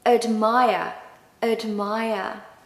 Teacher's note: And of course, no R pronunciation at the end.